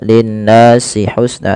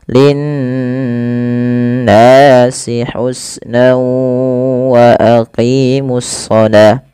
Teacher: Pada lafal nun berharakat tasydid itu wajib ditahan suara n ya. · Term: gunnah